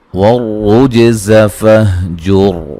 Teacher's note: را کو موٹا ادا کریں گے، را کے اوپر پیش ہے، را مشدد پر پیش ہو، را کو موٹا ادا کیا جاتا ہے، جیم پہ قلقلہ کریں گے اور یہ جو را ہے اس کو بھی موٹا ادا کریں گے وقفاً وصلاً، یہ موٹی ہوگی، ٹھیک ہے جی۔